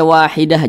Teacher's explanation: apabila kita berwaakaf atau berhenti tepat di huruf Ta marbutahah Maka dia di baca menjadi huruf ha Kalau berhenti dibaca menjadi huruf H tapi kalau diwasalkan atau kita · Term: ta marbutoh